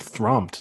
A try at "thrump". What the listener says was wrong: You said thromped with an O.